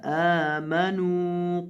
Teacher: حمزہ کو لمبا کریں گے اور نون کو بھی لمبا کریں گے